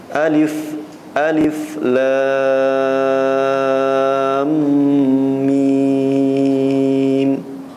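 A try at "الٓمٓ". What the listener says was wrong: Kurang panjang sedikit lagi. Lamnya kurang panjang, mimnya kurang panjang.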